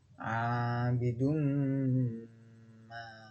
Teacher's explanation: tanwin yang dibaca masuk kepada huruf sesudahnya dengan mendengung atau idgham bi gunnah, yaitu pada kata abidun ma.